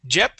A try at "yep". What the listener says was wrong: pronouncing a Spanish y saying Jeep okay remember the Y in English makes an e sound